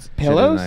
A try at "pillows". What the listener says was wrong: why do you throw an e in there